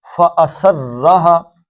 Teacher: را کو کھینچنا ہے تھوڑا سا، اس پہ شد ہے، باقی ایک ایک حرکت ہے، یہ 2 حرکتیں ہا کی.